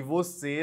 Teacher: E você é acentuado porque é uma palavra oxítona, ou seja, tem a última sílaba tônica e termina em vogal fechada E